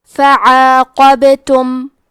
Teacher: حرف البا پہ جزم ہے، تو یہاں با کا حکم ہے قلقلہ. قلقلہ کا معنی ہے حرف ساکن کو ہلانا، تو ہم حرف البا کو ہلاتے ہوئے یہ کلمہ کو پڑھیں گے · قاف حروف تفخیم میں سے ہے، تو ہم یہ حرف کو موٹی آواز میں پڑھیں گے. حرف البا پہ جزم ہے، تو یہاں با کا حکم ہے قلقلہ.